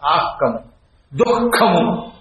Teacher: క ఖ అనే రెండక్షరములకి ముందొచ్చే విసర్గని జిహ్వామూలీయం అనాలి.